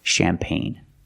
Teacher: remember it's from French so the CH is pronounced with a soft sh sound